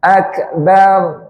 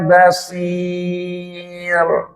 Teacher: Ro letaknya di ujung lidah yang menempel langit-langit. Nah, langit-langitnya bukan di depan sendiri, tapi agak sedikit ke belakang. Itulah yang menjadikan ro menjadi tebal.